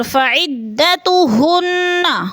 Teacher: ہن کی نون مشدد ہے، سختی سے جمع کر پڑھیں گے۔